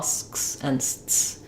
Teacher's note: I'm not aspirating, but that cluster of the ks and the cluster of the ts is there